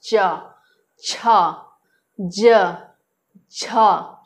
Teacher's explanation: तालु के माध्यम से जो है, जिसको तालव्य कहते हैं, च से लेकर के झ तक जो वर्ण है उनका उच्चारण होता है। जिह्वा का जो मध्य भाग जो है, तालु को स्पर्श करके जो ध्वनि बाहर निकलता है, उसे ही तालव्य वर्ण कहते हैं